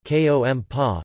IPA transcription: komˈpa